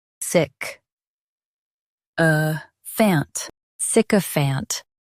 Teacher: Stress sick and keep a fant light.